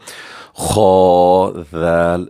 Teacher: ذال نرم آواز سے پڑھیں گے، اس میں شکار نہیں آنی چاہیے، سیٹی نہیں آنی چاہیے، بلکہ ثا، ذال اور ضا ان کا ایک ہی مخرج ہے ان تینوں حروف میں، اور بالخصوص اس وقت ذال کو نرمی سے ہم پڑھیں گے، سیٹی کی آواز نہیں آنی چاہیے۔